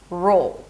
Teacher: The second part is an 'R' sound and a dark 'L'